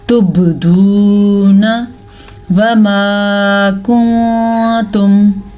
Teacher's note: آگے واو مدہ ہے، اسے ہم کھینچ کے پڑھیں گے، لمبا کر کے پڑھیں گے